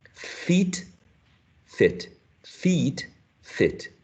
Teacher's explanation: Es más corto, shorter. El primero es más tenso, I. Los labios estirados, I. El segundo es, no es tan tenso, es más laxo